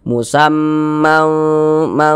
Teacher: Samar dan berdengung. Nah, jadi bunyi tanwinnya disamarkan. Jangan dibaca musaman man. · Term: ikhfa hakiki